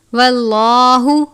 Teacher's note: لام سے پہلے زبر ہے، لام کو پر پڑھتے ہیں